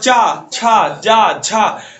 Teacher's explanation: चा छा जा झा वाली लाइन बोलिए, देखिए एकदम जैसे लग रहा है कि जीभ के आसपास सब तरह से हवाएं जो है घुट घुट के निकल रही हैं, एकदम संघर्ष करती हुई निकल रही है। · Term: स्पर्श संघर्षी व्यंजन